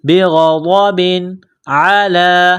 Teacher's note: غین اور ضاد کو موٹا کرنا ہے. بغضب، تنوین کے بعد عین ہے تو غنہ نہیں کریں گے تنوین پر. بغضب علی، لام کو 1 الف کے لمٹ میں کھینچنا ہے.